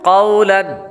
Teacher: क़ाफ के बाद वाव, वाव हुरूफ़ लीन में से है, इसलिए इसको लंबा नहीं करेंगे · क़ाफ हुरूफ़ मुस्तालिया में से है, इसलिए इसको पुर यानी मोटा पढ़ेंगे